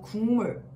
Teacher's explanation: 화면상 기역 받침을 가지고 있는 이 단어는 우리가 발음을 하게 되면 바로 국물, 이렇게 발음을 하게 되죠. 기역 받침이 어떤 환경에 의해 변화를 겪어 이응으로 바뀌게 되는 것이랍니다.